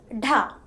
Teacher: This letter is pronounced just like da, but the release is followed by an extra puff of air.